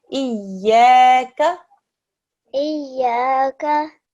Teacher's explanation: let's just make the ya a little bit thinner